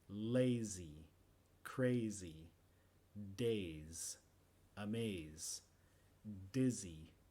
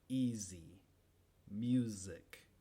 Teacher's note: es igual que la s solo moviendo las cuerdas vocales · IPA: [z]